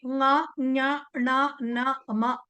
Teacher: తెలుగులో కూడా ఉంది టర్మినాలజీ. ముక్కుతో పలికేవి, అవి పలకడానికి మనకు ముక్కు సహాయపడుతుంది కాబట్టి అనునాసికలు అన్నారు వాటిని